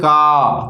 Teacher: लेकिन जब का खींच के बोलेंगे तो पीछे किसकी ध्वनि आने लगी, आ की ध्वनि आने लगी। इसका मतलब है कि जब इनको अगर खींच के बोलेंगे, लंबे समय तक बोलेंगे, तो ये स्वरों की सहायता से ही बोले जाएंगे।